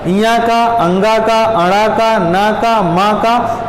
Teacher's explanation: इया का, अंगा का, अणा का, ना का, माँ का उच्चारण स्थान नासिका भी होता है। और अपने वर्ग के साथ में कंठ तो है ही है।